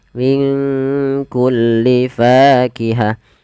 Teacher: Maka cara membacanya, samarkan nunnya kepada huruf kaf, minku langsung kepada makhraj huruf kaf. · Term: bacaan ikhfa